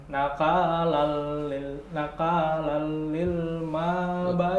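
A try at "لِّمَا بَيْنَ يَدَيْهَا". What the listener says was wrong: Oh, mana ada alilnya?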